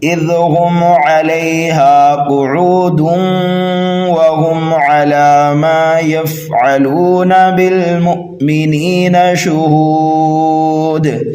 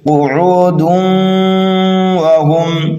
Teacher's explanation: اب یہاں پر قاعدہ ادغام کا اپلائی کیا جائے گا، اس لیے کہ تنوین کے بعد حروف یرملون میں سے واو آ رہا ہے